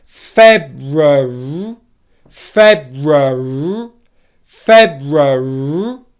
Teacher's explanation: think of it as a syllabic consonant where the R sound then lasts for the length of the syllable